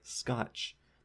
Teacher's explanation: there's no puff of air coming out on that K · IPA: [ˈskat͡ʃ]